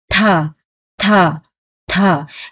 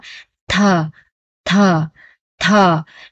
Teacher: dùng cái đầu lưỡi ấn lên cái răng của hàm trên, xong nó bật ra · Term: bật ra hơi